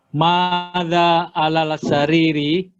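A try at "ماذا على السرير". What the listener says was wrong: bukan alal sariri Pak. Sin termasuk huruf syamsiyah. Lamnya dimasukkan ke sin.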